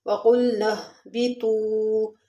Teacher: وَقُلْنَا اهْبِطُوا، واو مدہ ہے، واو ساکن اس سے پہلے پیش، واو مدہ تھوڑا سا کھینچ کے پڑھیں گے